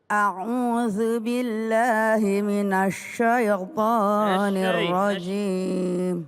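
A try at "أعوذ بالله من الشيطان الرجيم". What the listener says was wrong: Ya, minasyai, jangan maju bibirnya. Minasyai jangan. Minasyai. Syah, coba syah. Syah. Si. Syu. Syu baru maju. Bash. Minasyai.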